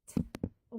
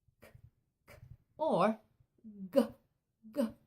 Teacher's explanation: my tongue is just at the front of my teeth when I make the sound t